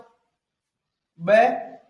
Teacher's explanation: ब महाप्राण नहीं है, इसका मतलब क्या है, अल्प प्राण है